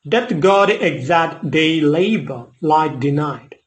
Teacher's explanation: And the meter of the poem is iambic pentameter. That means an unstressed syllable followed by a stressed syllable